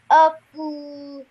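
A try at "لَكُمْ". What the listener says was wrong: Okay, this is lam, so lakum.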